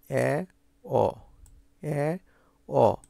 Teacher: তোমার জিহ্বাটা এ ও উচ্চারণ করার সময় যে জায়গায় ছিল, এ অ উচ্চারণ করার সময় তোমার জিহ্বাটা আরেকটু আরেকটু নিচে নেমে আসছে।